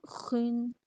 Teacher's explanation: خوا میں خراش اور پر